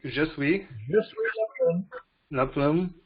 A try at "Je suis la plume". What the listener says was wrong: You don't pronounce the last E.